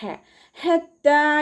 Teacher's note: ഹ എന്നുള്ള അക്ഷരത്തിൻ്റെ സൗണ്ടിനെ തൊണ്ടയുടെ മധ്യഭാഗത്ത് നിന്ന് തന്നെ കൊണ്ടുവരാം കേട്ടോ. ഹ നായി പോവരുത്.